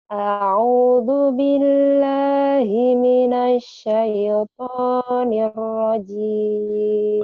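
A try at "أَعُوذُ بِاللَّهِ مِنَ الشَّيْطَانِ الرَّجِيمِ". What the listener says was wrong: Udah bagus tapi jangan terlalu ditahan ya. Jangan terlalu ditahan. A'udzu billahi minasyaitonir rajim. Jangan terlalu berlama-lama di itunya ya.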